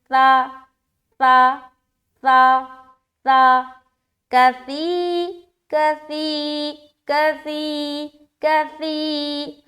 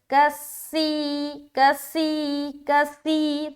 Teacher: سا کا جو مخرج ہے نا وہ بغیر سیٹی کے ادا کرنا ہے